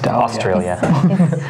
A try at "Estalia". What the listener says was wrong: Estalia, there's no R.